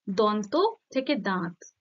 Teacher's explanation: এই অনুনাসিক ধ্বনিটা যুক্ত হয়েছে ফলে নাসিক্য ভবনের উদাহরণ হবে